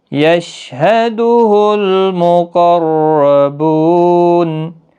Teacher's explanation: مقربون، قاف پر پڑا جائے گا، مستعلیہ کا حرف ہے، را بھی پر پڑا جائے گا زبر کی وجہ سے، بو واو مدہ ہے، نون ساکن پڑا جائے گا وقف کی صورت میں، 3 سے 5 الف کی مقدار کے برابر کھینچ کر وقف کریں گے۔